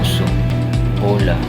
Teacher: Bilog ang labi habang sinasabi o.